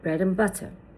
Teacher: So, we say bread and butter. We didn't pronounce the d and the t clearly.